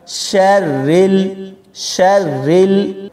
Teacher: من شر، را کو پڑھتے ہوئے بہت سارے لوگ اس کو موٹا پڑھ دیتے ہیں، لہذا یہ والا را باریک پڑھا جائے گا۔ شرل، شرل، را کے نیچے زیر ہے تو اس کو ہم باریک پڑھیں گے